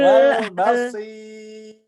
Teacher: Ro-nya harus tipis sampai mati, sampai habis maksudnya ya.